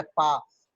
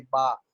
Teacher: Voice पहला sound अमूमन voice less होता है पा। और बा आप बोलेंगे तो वोकल कार्ड की वाइब्रेशन फील होगी